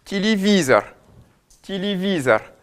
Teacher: Ty visar visar on va avoir un i qui lui va être bien accentué et on va avoir un O qui va s'ouvrir puisqu'il n'est pas sous l'accent · Le yé, du fait que l'accent tonique soit placé après et ne tombe pas dessus, on va avoir des yé qui vont se prononcer presque i. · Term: réductions de voyelle, réductions de voyelles